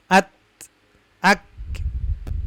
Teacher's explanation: Nah, syiddah mahmusah ini adalah huruf yang mempunyai sifat syiddah tetapi ya suaranya tertahan, tetapi ada aliran nafas, yaitu huruf kaf dan ta. Maka kalau kita dengar huruf kaf dan ta ada suara atau aliran nafas, terutama ketika sukun ya.